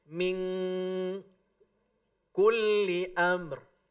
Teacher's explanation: Kalau ikhfa ab'ad, maka huruf yang keluar ketika menyebutnya bukan en, tetapi eng.